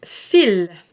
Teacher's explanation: we don't pronounce the S, but we pronounce the L